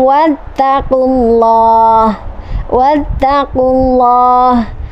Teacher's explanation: lafadz allah lamjalalah ini dibaca tafkhim atau tebal atau mufakhom